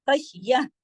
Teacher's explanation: ہاں کی آواز گلے میں آنی چاہیے. اور تا 2 زبر تن جو ہے، یہ بول تا مربوطہ جو ہے ہاں میں بدل گئی اگر ہم یہاں رکے ہیں تو.